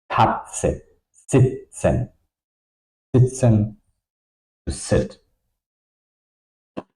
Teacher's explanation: Okay, so you want to have this pressure to produce the sound. The tongue is touching the row of teeth uh the top row. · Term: T set